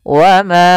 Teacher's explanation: ma kita panjangkan dulu 4 harokat atau 5 harokat untuk kadar mad jaiz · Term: mad jaiz munfasil